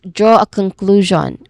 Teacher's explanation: So say the whole phrase as draw a conclusion. Make sure to hold the draw sound clearly and stress the middle syllable of conclusion.